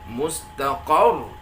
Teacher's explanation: alangkah baiknya kita naikkanlah intonasi di huruf qa, huruf qaf. Kita naikkan, kita nabarkan, kita aksentuasikan menjadi mustaqar. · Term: an-nabar